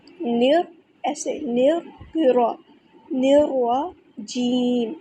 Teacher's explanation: نون کو را کے ساتھ ملا دینا ہے، نون باریک پڑھنا ہے، را بھی مشدد ہے تو اس کو 2 بار پڑھیں گے اور را کو موٹا ادا کریں گے